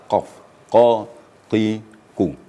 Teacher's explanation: apabila kita mengucapkan huruf q itu terasa getarannya pada pangkal lidah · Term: qaf